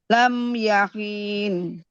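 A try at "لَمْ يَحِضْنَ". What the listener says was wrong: Jangan dipanjangin. Yahidhum. Buatnya jangan boleh hilang, Bu. Wallahi lam yahidhum.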